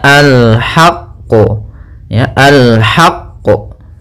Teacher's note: kita tekan qafnya baru kita pantulkan